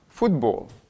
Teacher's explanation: On a un O qui est bien sous l'accent tonique, qui va bien se prononcer O.